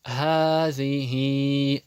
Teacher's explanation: Хи тянется, потому что после него пришла буква Я. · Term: мад